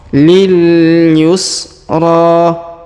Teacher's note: huruf ro kita panjangkan dua harakat karena di atasnya terdapat Alif kecil dan di depannya terdapat alif